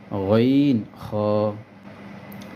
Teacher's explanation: হলকের শেষ হইতে গইন খ